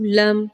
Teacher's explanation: لم، لمبا نہیں کرنا، جھٹکا نہیں دینا